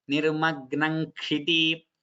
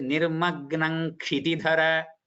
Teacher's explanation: It is nga followed by ka followed by sha. So the dvitva is an ngakara.